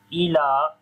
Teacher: Ila, lam we long due to standing fatha.